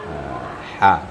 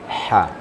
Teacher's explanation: Bukan ha menghampiri dada, tetapi di tengah tenggorokan. Ha. Sama makhraj dengan ain. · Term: ha pedas